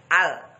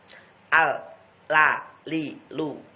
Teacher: lam ini makhrajnya ujung lidah, ditekan di langit-langit bagian agak depan